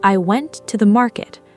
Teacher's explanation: I went to the market. Her voice climbed slightly through the middle words and then dropped clearly on the final word, market. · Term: falling intonation